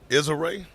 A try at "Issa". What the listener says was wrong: you got to say her name right Isa is ISA it's not is a like is a of sunshine